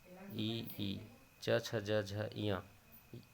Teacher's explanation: जिस ध्वनि के उच्चारण में जिह्वा का मध्य भाग तालु से स्पर्श करता है उसे तालव्य ध्वनियाँ कहते हैं।